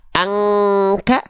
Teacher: huruf Kaf dengungan engnya tipis